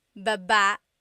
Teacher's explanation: Emphasis is on the second syllable.